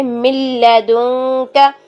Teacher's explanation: تو من لدنک، مل، نون ساکن کے بعد اگر لام آ جائے تو ہم کیسے پڑھیں گے کہ نون کی آواز کو اس کے اندر ایسے مکس اپ ہو جائے گی کہ وہ ختم ہی ہو جائے گی. نون کی آواز بنا غنہ کے ہوگی، بغیر غنہ کے ہوگی